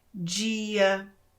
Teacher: Então você produz esse som meio chiado na letra D